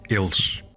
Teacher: the S becomes sh at the end of the word, and also notice that the reduced vowel, a fully dropped vowel actually, results in a consonant cluster ending in sh.